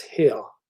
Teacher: the acoustic energy in the end of the word has disappeared